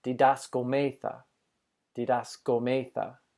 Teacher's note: I'm trying to put the emphasis over that omicron that has the accent